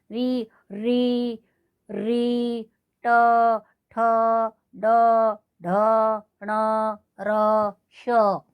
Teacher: तो इनका उच्चारण स्थान हुआ अपना मूर्धन्य। मूर्धा मतलब सिर के ऊपर का भाग।